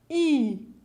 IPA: i